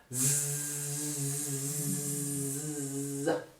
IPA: z